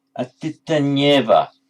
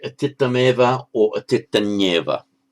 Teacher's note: That final M has become, you notice, a double nya.